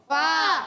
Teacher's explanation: فا کا مخرج اوپر والے دانتوں کے کنارے نیچے والے ہونٹ کے تر حصے سے لگیں گے